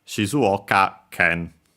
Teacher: low high high and then low low for the can